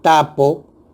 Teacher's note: para pronunciar T en la palabra tapo, se bloquea completamente el flujo del aire, por eso se denomina oclusiva.